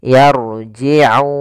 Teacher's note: Hati-hati juga di sini huruf ain, jangan dibaca yarji'un dengan hamzah, tapi dia ain